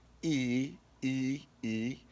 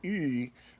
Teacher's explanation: e e but if i say e what's happening is that i'm kind of tensing up the back of my throat a little bit so it feels like the sound is dropping slightly in the back of my throat